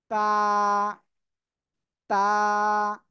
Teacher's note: জিহ্বার আগা সামনের উপরের দুই দাঁতের গোড়ার সাথে লাগিয়ে তা অক্ষরটি উচ্চারিত হয়।